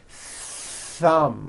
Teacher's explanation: You must stretch out the th sound and hear the air friction. Thumb, like that.